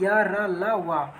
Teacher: या वा को हम अर्धस्वर भी कह देते हैं, र को प्रकंपित या लुंठित भी कह सकते हैं, और ल को पार्श्विक भी कह देते हैं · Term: अंतःस्था